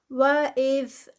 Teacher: زال کو نرمی سے ادا کرنا ہے اور از بزنگ ساؤنڈ نہیں دینی جیسے کہ وہ زا کی ساؤنڈ ہے